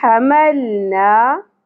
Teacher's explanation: ہا وسط حلق سے، ہا ہے حلوہ کی طرح نہیں پڑھنا ہم اس کو۔ حَمَلْنَا، اور لام ساکن جہاں کہیں بھی آئے وہاں پہ قلقلہ نہیں کرنا، حمل نہیں پڑھنا۔